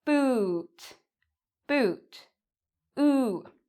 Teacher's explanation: So, in boot, if I slow it down, my lips actually make a circle